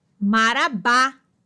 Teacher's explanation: Oxítona, última sílaba tônica.